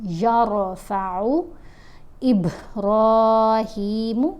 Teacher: और रा को यहाँ मोटा पढ़ेंगे, रा साकिन है लेकिन फिर भी हमने देखना होता है रा साकिन से पहले हरफ के ऊपर अगर ज़बर हो या पेश हो तो रा साकिन को मोटा पढ़ते हैं, अगर ज़ेर हो तो फिर रा साकिन को बारीक पढ़ते हैं।